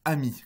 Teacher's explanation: vous devriez avoir conscience de cette occlusive glottale au début du mot « ami », pris isolément · Il commence en réalité par une occlusive glottale. Et cette occlusive glottale vient en réalité s'associer à la position pour que celle-ci puisse être réalisée.